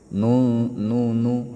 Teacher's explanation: Kalau nun itu ujung lidah bertemu dengan gusi atas